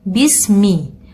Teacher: jangan sampai sinnya terseret, akan tetapi sinnya kita baca tuntas sebelum masuk ke makhraj mim